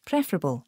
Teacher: Now the fer isn't stressed.